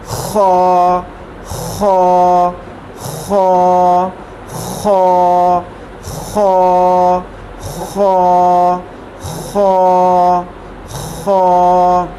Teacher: खौ जो है ये भी हरूफ हल्की है, ये भी हलक से अदा होता है, लेकिन ये हलक के ऊपरी हिस्से से जिस तरफ हमारे दांत हैं, यानी कि शुरू वाला हिस्सा जो हलक का है यहाँ से अदा होगा। इस तरह की आवाज़ आएगी इसमें।